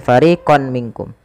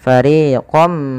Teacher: ketika kita memasukkan tanwin ini kepada huruf mim ditahan dengan gunnahnya. Gunnah itu membunyikan huruf sampai kepada rongga hidung kita. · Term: idgham bi gunnah